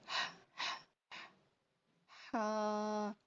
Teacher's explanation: ہا جو ہے وہ گلے کے وسط سے نکلے گا، درمیان سے، ٹھیک ہے۔ اس کا مخرج ہے وسط حلق، حلق سے نکلے گا، اور اس کو ویسے جب ہم بچوں کو لیسن یاد کرواتے ہیں تو ہم ان کو بتاتے ہیں کہ یہ ہوا والا ہا ہے، ٹھیک ہے، یہ ہوا کے ساتھ نکلے گا، جیسے ہا۔